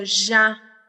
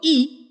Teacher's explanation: Ahí suena como una consonante, es una consonante cuando digo y. Pero cuando digo I, ya es una vocal.